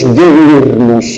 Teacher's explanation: y hace largas las dos vocales y hace un hiato. Y a lo mejor ese mismo hablante, si está con prisa, pues dice diurno.